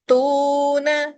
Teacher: ت یہاں جھٹکا آئے گا اور تو میں واو مدہ ہے، ون فنگر کھینچوں گی